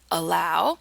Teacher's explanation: So the letter A can be an A like in hat, an A like in water, a schwa, which is just this reduced grunting sound in allow